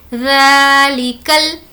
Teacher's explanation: ذا پر کھڑا زبر ہے اسی لیے کھینچ کر پڑھیں گے